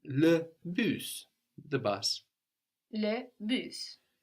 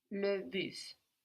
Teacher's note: So that's spelled just like in English, B-U-S, but we pronounce that S on the end.